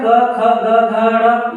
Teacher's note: क, ख, ग, घ, ड़, ये कंठ से उच्चारित होता है, इसलिए इसको कंठस्थ कहते हैं